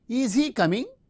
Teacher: We can say is he coming? So the verb is in the beginning as well as a rising tone. · In oral mode, the fronting of the verb and the rising tone. Since it is a polarity question or yes no type question, we use the rising tone.